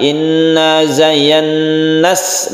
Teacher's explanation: Kemudian ini idgham syamsiyah langsung ke sin ya, meskipun zayyana nah ini panjang tapi bertemu dengan tasydid sin ini dipendekkan. Inna zayyannas langsung ya, langsung tidak digeret nanya.